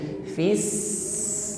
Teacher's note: saat menekan huruf Sin maka nampak sifat asofir bunyi desis yang mengalir · Huruf sin bertasydid ditekan membacanya. Saat menekan huruf sin maka nampak sifat asfir, bunyi desis yang mengalir ya, hames nafas terlepas, asfir desis yang mengalir, fis, nah ini bunyi asfir ya, desis yang memanjang ini.